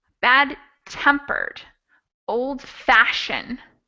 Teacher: for compound adjectives the stress is on the second part